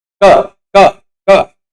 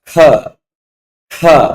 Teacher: तो अब यहां देखिएगा, आप क और ख का उच्चारण करके अंतर समझिए। क और ख, क बोलेंगे तो लगेगा कि कम प्राण निकल रही, क क क, ख ख ज्यादा हवा निकल, प्राण यानी हवा, ज्यादा हवा निकल रही इसलिए वो महाप्राण है